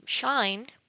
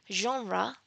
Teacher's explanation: the front part of the tongue is raised towards the hard palate or the roof of the mouth uh just behind the alveolar ridge. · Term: post-alveolar fricatives